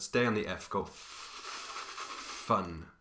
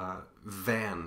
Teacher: F is known as an unvoiced consonant because your voice isn't active